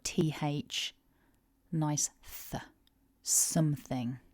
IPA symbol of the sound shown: θ